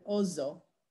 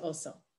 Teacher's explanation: An S between vowels is pronounced z, but the double S is sa. So for example, the word for bear would have been ozo, as opposed to oso.